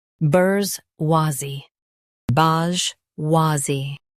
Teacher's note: Stress wha and soften zee.